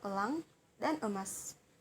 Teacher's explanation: vokal yang paling rendah seperti Kata nenek dan dendeng Lalu ada bunyi e yang termasuk dalam vokal Tengah termasuk dalam vokal yang sedang mulut tidak membundar serta termasuk dalam semi tertutup seperti kata elang dan emas lanjut